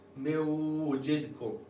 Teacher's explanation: Wav is part of the Yamun letters, and it becomes a tashdid, mewajidkum. And as you pronounce that, you should hopefully hear some of that Wav within that nasal cavity. · Noon gets dropped because there's a Wav. Wav is part of the Yamun letters, and it becomes a tashdid, mewajidkum.